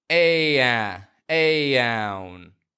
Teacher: And then it transitions to the N, which has the opposite position, with your tongue low in the back and high in the front, touching the roof of your mouth, just behind your teeth. So to get there, I have to lower my tongue in the back of my mouth before I raise it in the front.